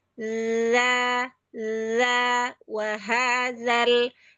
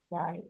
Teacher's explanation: Yang dal ujung lidahnya di luar di gigi di ujung gigi sari atas begini.